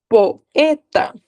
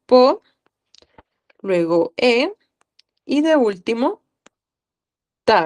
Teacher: la o y la e no están juntas · es como un diptongo, pero cuál va a ser la diferencia que ya no van a estar en una misma sílaba, sino que en una sílaba separada. Son dos vocales en sílabas separadas. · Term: iato